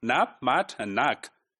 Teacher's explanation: the vowels are short before voiceless consonants, like in words nap, mat, and nak. Since the ending sounds are voiceless stops, so they reduce vowels.